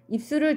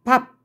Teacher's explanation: 두 입술을 닫았다가 터뜨리면서 바 하는 소리를 내죠. 초성에 있는 브는 파열음이 되는 거예요.